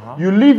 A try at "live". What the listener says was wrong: Say you live. live. Don't say leave. Live.